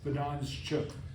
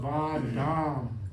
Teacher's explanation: It's because of the like you said, the anuswara in Dam, which is plural, accusative plural, and then before cha, you add that sh. It makes it smoother